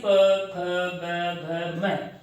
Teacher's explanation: जो प की लाइन है इसको आप बिना होठों के चिपकाए नहीं बोल सकते हैं। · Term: ओष्ठ वर्ण